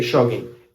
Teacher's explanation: Jogging with one N. We don't really pronounce the G because it's too hard for us to pronounce it.